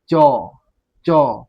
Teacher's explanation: च बोलिएगा तो आपका जो तालु होता है यानी कि दांत का ऊपरी वाला भाग उसमें आपका जाके जीभ क्या हो जाएगा? सट जाएगा। बोल के देखिए चौ चौ यानी कि दांत का ऊपरी परत है।